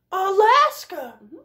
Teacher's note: here is one where the schwa a is first and last